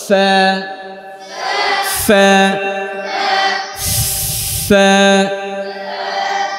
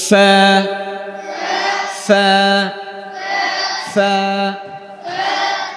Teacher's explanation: নিচের ঠোঁটের পেট সামনের উপরের দুই দাঁতের আগায় লাগিয়ে